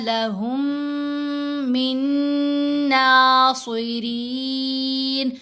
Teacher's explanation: صاد کو موٹا پڑھنا ہے، را کو باریک پڑھا جائے گا